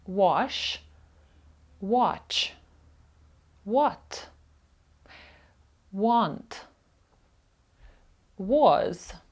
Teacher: наша буква a може читатися як коротке о